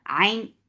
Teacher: ain for dhamma circle lips, and ain should be from your throat